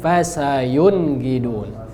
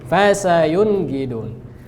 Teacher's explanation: Dia enggak boleh ada dengung. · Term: izhar